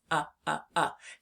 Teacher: When we say the short u sound, our mouth is more closed than it is with the a. It's more up like this.